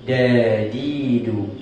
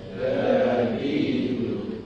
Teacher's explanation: Huruf dal sebutannya nipis, lembut.